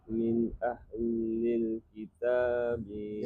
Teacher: Ketemu Hamzah dulu. Izhar halqi berarti nun atau tanwinnya jelas, tidak dengung.